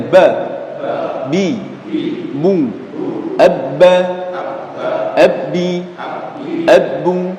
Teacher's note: huruf ba itu tidak ada aliran nafas yang mengalir ketika diucapkan, alias tidak ada sifat mesnya.